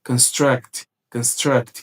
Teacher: com a ênfase maior na segunda sílaba, ali, você tem que entender que isso aqui é um verbo